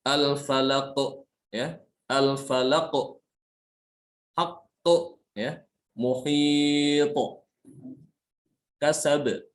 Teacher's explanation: Maka di sini qalqalahnya disebut dengan qalqalah besar karena terasa sekali ya, terasa lebih kuat. Bunyi qalqalahnya itu lebih kuat ya ketika dalam keadaan waqaf.